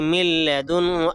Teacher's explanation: یہاں پہ من لدن ہو نہیں پڑھیں گے بلکہ مل لدن ہو ، آواز کو خوب ظاہر کر کے پڑھیں گے، آواز کو